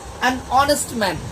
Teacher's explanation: এখানে এইচ থাকার কারণে হনেস্ট হওয়ার কথা ছিল, বাট আমরা প্রোনাউন্স করতেছি অনেস্ট ম্যান, যার কারণে এখানে এন ব্যবহার করা হয়েছে। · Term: সাইলেন্ট এইচ